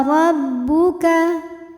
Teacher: Huruf ra dibunyikan secara tafkhim karena berbaris fathah